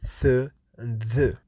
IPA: θ and ð